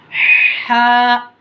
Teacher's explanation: बीच हलक से पढ़ना है एकदम कड़क